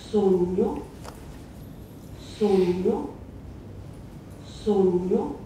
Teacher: it has a palatalized N between the vowels